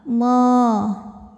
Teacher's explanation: Lam pada lafaz Allah atau lam jalalah dibunyikan secara tafkhim karena huruf sebelumnya berbaris dhammah, maka dibacanya tebal.